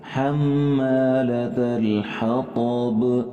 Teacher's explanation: یہاں حمالة کے اندر ہم میم کے اوپر غنہ کریں گے، ٹھیک ہے، اور اس کے بعد آخری لفظ جو ہے با اس کے اوپر قلقلہ کریں گے